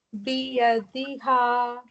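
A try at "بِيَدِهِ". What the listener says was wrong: No. He. Kasra, right? Biyadihi.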